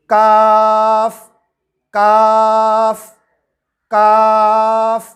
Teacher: قاف، زبان کی جڑ کو کوے کے متصل، کوے کے قریب تالو پر لگا کر موٹی آواز میں کہیں گے قاف قاف قاف۔ کاف، زبان کے پچھلے حصے کو کوے کے قریب تالو پر لگا کر باریک آواز میں کہیں گے کاف کاف کاف۔